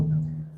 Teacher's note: A tipis, jangan o, ya.